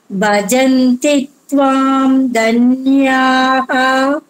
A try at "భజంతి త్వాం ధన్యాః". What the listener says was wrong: అక్కడ కామా అమ్మ, హా విసర్గ కాబట్టి హా స్పష్టంగా పలకాలి. భజంతి త్వాం ధన్యాః